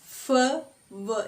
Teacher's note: upper front teeth is passive articulator and lower lip is active articulator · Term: Labiodental